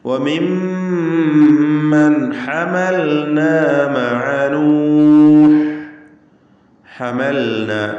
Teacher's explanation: ഹമൽന ലാമു സാക്കിന ഇൽഹാർ ചെയ്ത് വ്യക്തമാക്കുക. ഹമന്ന എന്ന് അവ്യക്തമായി പോകരുത്. · മിൻ ദുർരിയ്യതി ആദം, മിൻ ദുർരിയ്യതി ആദം വമിമ്മൻ ഹമൽന, അതിൽ വന്ന മീം മുശദ്ദദ, ഷദ്ദ് നൽകപ്പെട്ട മീമിന് 2 ഹറക്കത്തിൻ്റെ അളവിൽ മണിച്ചുകൊണ്ട് ഉച്ചരിക്കുക. വമിമ്മൻ എന്നതിലെ അന്ത്യത്തിലെ സാക്കിനത്തായ നൂൻ ശേഷം ഹ വന്നതിനാൽ ഇൽഹാർ ഹൽക്കി മണിക്കാതെ വെളിവാക്കണം.